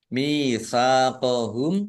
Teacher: bertemu dengan huruf mim bacaan idgham mimi atau idgham mutamasilain ya. Dibaca mendengung mimnya ditahan biar tampak mendengungnya